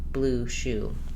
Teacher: the high rounded back vowel oo, as in blue shoe. The symbol for this vowel oo is simply the lowercase letter u, oo, and I use blue shoe as a reminder. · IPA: /u/